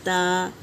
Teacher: زبان کی نوک اوپر کے دانتوں کے مسوڑوں کی جڑ میں لگائیں گے تو تا ادا ہوتا ہے